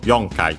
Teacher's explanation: it's actually accented on the yo